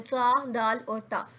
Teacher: ये जुबान की नोक और ऊपर के दांतों की जड़ से अदा होता है। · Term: हरूफ नितया